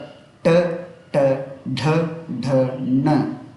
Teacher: ಮೂರ್ಧನ್ಯ ಅಂದರೆ ನಾಲಿಗೆಯ ಭಾಗ, ನಾಲಿಗೆಯ ತುದಿಯ ಭಾಗವು ಹಿಂಗೆ ಫೋಲ್ಡ್ ಆಗುತ್ತೆ. ನಾಲಿಗೆಯ ತುದಿ ಭಾಗವು ಮಡಿಚಿಕೊಂಡು ಬಾಯಿಯ ಮೇಲ್ಭಾಗಕ್ಕೆ ತಾಗತ್ತೆ. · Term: ಮೂರ್ಧನ್ಯ ವರ್ಣಗಳು